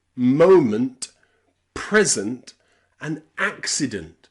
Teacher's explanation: All of them end in ent, and it's unstressed.